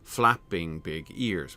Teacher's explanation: Stress, unstressed, unstressed, stressed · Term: classic half-line pattern